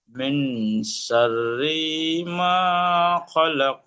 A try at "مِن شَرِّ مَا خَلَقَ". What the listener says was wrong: شر টান দেব না। من شر ما خلق. মিম নুনজের মিং, কিন্তু এখানে গুণনা হবে ইকফার গুণা, কারণ নুন সেকেন্ডের পরে শিন এসছে, তাই না? শিন হলো ইকফার গুণা, তাহলে কি মিং।